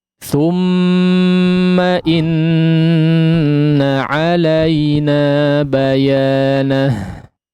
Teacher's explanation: Baik, diperhatikan di sini awal ayatnya ada ghunnah yang dipanjangkan ya, mim bertasydid, juga kata kedua ya, kata keduanya juga bertasydid ya, nun bertasydid, maksudnya dighunnahkan dengan ghunnah yang dipanjangkan ya. Tsumma inna ya, ditekan sesuai dengan kadarnya ya.